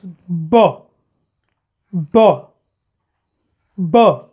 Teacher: Should when you produce the sound b, yes, b, b, b, yes, we feel vibration because vocal cords vibrate here. So this is called voiced bilabial plosive.